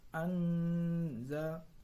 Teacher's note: Yang ketiga yaitu anzalnahu, yaitu bacaan ikhfa hakiki. Ikhfa hakiki karena ada huruf nun mati bertemu dengan huruf za. Cara membacanya samar-samar membentuk huruf za